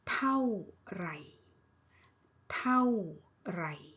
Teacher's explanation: เท่า เท่า falling tone ไหร่ low tone